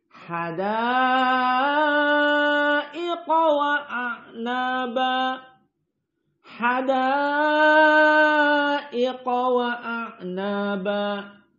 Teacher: Adapun qiraah dari Wars An-Nafi' dan hamzah az-zayyat dibaca dengan al-isba lebih panjang.